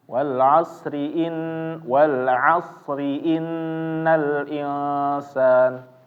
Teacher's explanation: tetap rinya tetap tipis ya Jangan dibaca secara tebal tapi huruf shnya huruf shnya harus tetap tebal ya Jangan dibaca tipis huruf shnya malah jadi S ya kalau misalnya kalau dibaca tipis